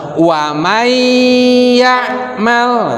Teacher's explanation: Jadi cara membacanya itu ketika nun sukun atau tanwin bertemu dengan huruf iya itu salah satu huruf idgham bigunah, maka cara membacanya harus dimasukkan dan dikasih gunah